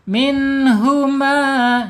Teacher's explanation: Min huma, nun sukun ketemu huruf ha ya. Ketika ada nun sukun ketemu huruf ha, maka wajib dibaca idhar ya, idhar harus jelas. minhuma, ya jelas ya bacanya, nggak boleh minhuma tapi minhuma.